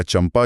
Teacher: जब बिंदी के बाद प वर्ग का अक्षर आता है तो होठ जुड़ते हैं और बिंदी म की ध्वनि देती है